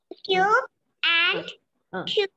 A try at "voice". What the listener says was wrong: Listen, you should not stretch your voice. Okay. Say it short. Voice.